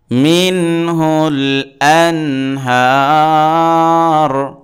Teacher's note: হামজা হাও, হাও খাও, আইন গাইন, এই যে ছয়টা রয়েছে এটা হলো এজহারের অক্ষর। অতএব নুন সাকিনের পরে হা আসছে, এজহার হয়েছে, স্পষ্ট করে পড়তে হবে। মিন হুল, হামজা নুন জবর আন, হা খারা জবর হা, রাপেশ রু, আনহার।